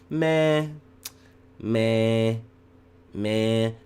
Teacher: what you're actually doing is you're nasalizing that vowel. So it's actually two elemental sounds.